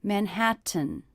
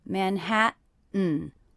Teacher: I'm saying Manhattan with a little break. That means these T's are stop T's.